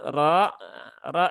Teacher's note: dia tebal ya ditebalkan dengan mengangkat pangkal lidah